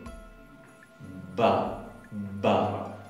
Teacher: la ba es un sonido oclusivo, bilabial, sonoro.